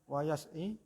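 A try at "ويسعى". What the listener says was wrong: Nah, kenapa yas'i itu kan yaknya tidak ada titik duanya, nggih? Berarti apa? Kalau ada titik duanya. Itu kan enggak yaknya enggak ada titik duanya ya. Berarti bacanya apa? Wayas'a.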